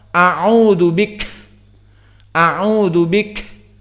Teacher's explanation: Maka yang qiraahnya benar, dia tidak akan bisa untuk membaca kaf dengan tanpa hams.